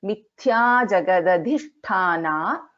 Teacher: So Dha is a Mahaprana and we have a Shakara, Shanmukha Sha, and then we have Mahaprana Tha also here.